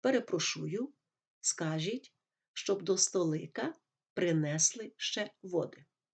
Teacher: поляк знаючи що наголос у польській мові падає на перед останній склад так озвучив би український текст